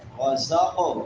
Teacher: قلقلہ بھی کریں گے، اس کو ہلا کر بھی پڑھیں گے اور موٹا بھی کریں گے